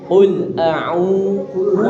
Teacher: Ya, L-nya di belakang gigi seri.